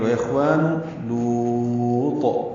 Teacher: الف مدہ ہے، 2 حرکات لمبا ہے، نون کو معروف اور جلدی پڑھیں گے. اخوان لوط، لام کو لمبا کریں گے، طا ساکن پہ قلقلہ کر دیں گے. وقفاً مد عارض سکون ہے اور طا پہ قلقلہ ہے.